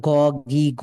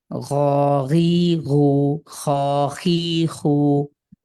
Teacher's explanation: আপনি যেটা পড়ছেন শুধু গ পড়ছেন বাংলার গি গু হচ্ছে কিন্তু কন্ঠের শেষ থেকে একটু গড়গড়ানি ভাবের সাথে